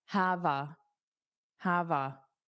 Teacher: notice you hear that v on the a.